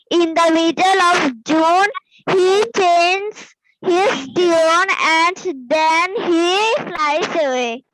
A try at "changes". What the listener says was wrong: ওকে, same ভুল করেছো, চেঞ্জেস। Same ভাবে বলতে হবে চেঞ্জেস, ঠিক আছে? দেখো ES আছে।